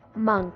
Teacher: The O sound in the word monk is pronounced as UH.